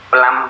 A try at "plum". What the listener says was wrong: Not plum, plum. When you say plum, it sound like b sound, like b. Okay. Not the p sound.